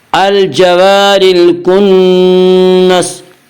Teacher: الکنس نون مشدد غنہ ہوگا، غنہ کی مقدار 1 الف ہے